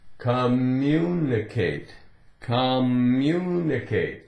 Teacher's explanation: there's no break the way it's said the two M's really they just run together